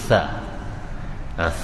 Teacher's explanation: Sa iaitu hujung gigi dan hujung lidah bertemu